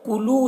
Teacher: واو مدہ ہے، اسے ایک الف کے برابر کھینچ کر پڑھیں گے